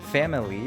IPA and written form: fæmɪli (family)